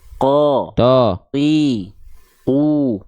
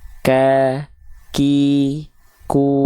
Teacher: Maka kembali ke dalam ayat, di sini adalah huruf qaf, tandanya dia pangkal lidahnya menyentuh ke langit-langit yang paling dalam, ke langit-langit yang lunak, biar nggak ada keluar percikan nafas